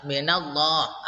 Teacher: Nah, seperti di sini didahului fathah minallah ya, na. Minallah, maka lafal Allah lam jalalahnya ini dibaca tebal. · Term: tafkhim tebal